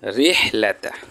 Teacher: তার কারণ হচ্ছে রয়েতে জের আছে, আর র হরফে যদি জের থাকে সেই ক্ষেত্রে র হরফটি পাতলা করে পড়তে হয়।